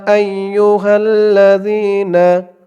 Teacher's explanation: এখানে তিন আলিফ টান হবে মধ্যে মুনফাসেল